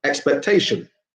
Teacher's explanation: in each of these words we're always stressing the second to last syllable